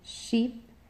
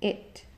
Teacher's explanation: in high front we have long e as in sheep and short I as in it